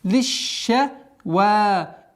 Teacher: После удвоения лям, согласовки кесра, уходим на шин с удвоением.